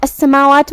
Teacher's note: کلمت السماوات میں سین پہ تشدید ہے تو ہمیں 2 حرف کے برابر سین کو ادا کرنا ہے